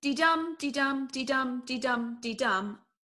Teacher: unstressed syllable followed by a stressed syllable